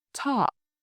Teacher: In English, when you say a word like talk, a strong puff of air comes out.